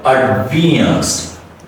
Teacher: So the first A is reduced, the next A is stretched, and the last E is also reduced and a schwa sound.